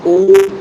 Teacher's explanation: ऊ बोलोगे तो क्या होगा? होठ गोल होंगे। होठ गोल। अगर होठ ही गोल है तो फिर आंसर ही होस्ट कर दो ना आप।